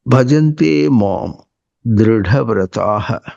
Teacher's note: ఢా పలకాలంటే ఇది మహాప్రాణం ఉంటారు దాన్ని. దృ అనేదేమో అల్పప్రాణం పక్కన మహాప్రాణం పలకాలంటే ఆ స్పష్టత ఇవ్వాలి.